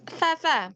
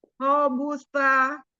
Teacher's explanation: Pakai ujung lidah yang bertemu dengan ujung gigi di atas.